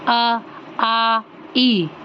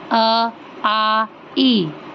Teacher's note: ऐसे स्वर जिनके उच्चारण में केवल मुख से हवा निकलती है, नाक से नहीं निकलती है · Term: निरनुनासिक स्वर